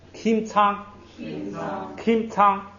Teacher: 第一音节后边那个麻呀，要把嘴闭一下，发一个木的音